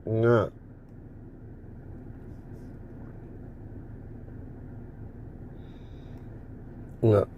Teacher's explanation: ഇനി നമ്മൾ മൂക്കിലൂടെ ആ ശബ്ദത്തെ, ക എന്ന ശബ്ദത്തെ നാസത്തിലൂടെ തീർക്കുകയാണ്.